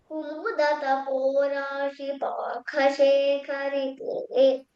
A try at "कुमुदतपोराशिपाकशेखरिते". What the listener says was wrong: Akha Mahaprana illa. It should be Alpa Prana.